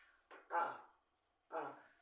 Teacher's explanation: la a es una vocal baja central